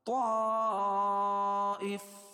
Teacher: طائف مد متصل، کیونکہ حروف مدہ کے بعد حمزہ اسی کلمے میں ہو تو مد متصل ہوتا ہے، اور اس میں 2.5 سے 3 الف کے برابر اس کو کھینچ کے پڑھیں گے